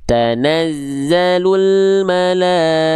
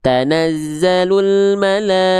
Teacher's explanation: Kalau berhenti jadi H besar sukun.